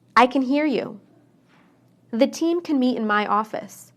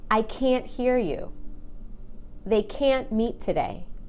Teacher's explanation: It's how the A is pronounced. When I say can inside a sentence, I shorten the A. · when I say can't, I stress that A and make it really long. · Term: the long A